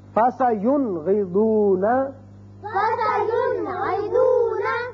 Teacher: نون ساکن کو ہم نے ظاہر کر کے پڑھا فَسَيُنْغِضُونَ. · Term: اظہار